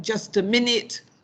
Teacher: there we have a stress on min